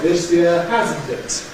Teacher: We stress the phrase this year on the this, not on the year. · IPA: ðə ˈweðəz biːn ˈɔːfli ˈɒd ˈðɪs jɪə